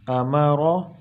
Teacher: جس را کے اوپر زبر ہوگا وہ را موٹی ہوگی، تو یہاں ہم پڑھتے وقت اس کو منہ کو گول کر دیں گے